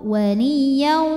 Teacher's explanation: maka tanwinnya masuk ke waw. Waliyau disertai bunyi dengung, masuk hidung. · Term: idgham Bi ghunah, idgham bi gunnah